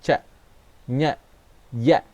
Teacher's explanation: ச என்று சொல்றப்ப எங்களுடைய நாக்கினுடைய நடுப்பகுதி உயர்ந்தும் ஏனைய பகுதிகள் கொஞ்சம் சங்கிறப்ப கொஞ்சம் தாழ்ந்தும் இருக்கும். · இந்த ச உச்சரிக்கிறது பார்த்தீங்கன்னா இடைநாவும் இடையன்னமும் பொருந்தும். ஆகவே இந்த இடைநாவும் இடை அன்னமும் பொருந்துறதுனால நாங்க இடைநா இடையன்னம் அப்படின்னு சொல்லலாம். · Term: அன்ன ஒலிகள்